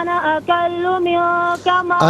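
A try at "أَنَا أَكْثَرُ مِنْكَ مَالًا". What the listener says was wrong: انا اکلو نہیں ہے، انا اکثر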